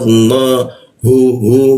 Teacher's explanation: hu posisinya ditengorkan bagian bawah dia